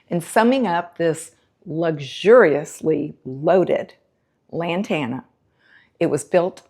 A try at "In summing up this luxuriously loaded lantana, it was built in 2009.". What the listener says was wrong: Do it again. Don't do those breaks. Luxuriously loaded lantana. Luxuriously loaded.